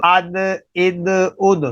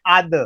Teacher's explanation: تا کی آواز باریک ہے، دال کی آواز باریک ہے، لیکن بعد میں دال کی آواز ذرا بھر کے آ رہی ہے ، اد، اس وجہ سے کہ یہ حروف قلقلہ میں سے